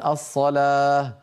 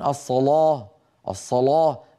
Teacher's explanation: سبقت اللام المفتوحه بصاد مثل الصلاه اغلب القبائل العربيه يقولون الصلاه بعض القبائل العربيه يقولون الصلاه الصلاه فيجعلون اللاما مفخمه متاثره بالصادقه قبلها هذا الامر اللغوي اللهجي نقله لنا ورش عن · فيجعلون اللام مفخمة متأثرة بالصاد قبلها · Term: اللام المفخمه